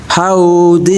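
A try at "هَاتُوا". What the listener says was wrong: Ho bukan ha.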